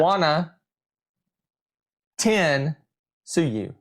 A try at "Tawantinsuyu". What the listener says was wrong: So you're adding extra vowels. Tawan Tinsuyu.